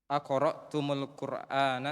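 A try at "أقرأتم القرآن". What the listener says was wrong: Jangan dulu sambung. Aqra'tum al-Qur'ana, baca begitu dulu. Saya sekarang sukun ketemu sukun. Tidak akan mungkin bisa dibaca. Ya, ini namanya liltiqa'is sakinain. Bertemunya dua sukun. Maka sukun yang pertama harus diharokati. Kalau sukun yang pertamanya adalah mim li jam'i dzukur seperti di sini, maka dia dhammah.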